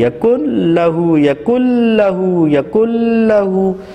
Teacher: نون کی کوئی آواز ہمیں ناک سے سنائی نہیں دے رہی، یکل لہو یکل لہو یکل لہو، ناک میں غنّے کی کوئی آواز باقی نہیں ہے۔ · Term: ادغام بلا غنّہ